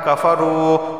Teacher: واو سے پہلے پیش ہے ایک الف کے برابر کھینچ کر پڑھا جائے گا